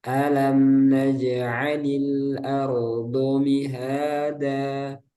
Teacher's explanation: fathah itu enggak boleh e ya kalau tipis a